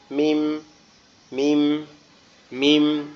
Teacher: মিম হচ্ছে আমাদের দুই ঠোঁটের শুকনা জায়গা, এখান থেকে উচ্চারিত হবে